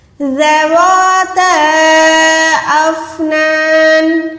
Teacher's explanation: زال جو ہے ز نہیں ہے، زال ہمیشہ نرم ہوتا ہے، · زال کی ادائیگی آپ نے نرم رکھنی ہے۔ تا کو 2 سیکنڈ لمبا کریں کیونکہ یہاں پر چھوٹی سی مد ہے، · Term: چھوٹی مد